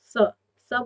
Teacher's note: स बोलने पर आपकी जीभ दांतों की तरफ जाती है, दांतों से थोड़ा स्पर्श करती है, इसीलिए इस सा को दंत सा माना जाता है।